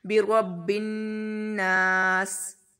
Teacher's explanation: ادھر نون پر جو ہے شد آ گئی تو نون پر غنہ کریں گے ہم. با کو نون کے ساتھ ملاتے ہوئے ہم غنہ کریں گے، ناک میں آواز لے کر جائیں گے.